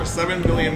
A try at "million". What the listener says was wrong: You said with an M. That sounded like you said with a B. You said $7 million.